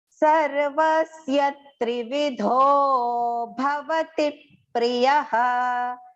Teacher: Tri and V both are short. Dho has to go long.